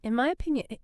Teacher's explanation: it does sound like that n wants to be an M it does right your tongue is already getting ready for that